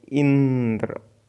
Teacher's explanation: इंद्र में ई पर बालाघात हो रहा है